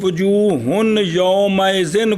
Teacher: اس کا جو غنہ ہے نا جو خیشوم والی آواز ہے وہ باقی رکھنی ہے